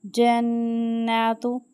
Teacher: نون مشدد ہے، غنہ کریں گے